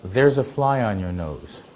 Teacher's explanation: doesn't have a stressed vowel on there because you're not pointing to anything